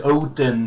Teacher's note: you say Odin, but there's no D. It's an eth, right? And like I say, the O in Icelandic is with a comma.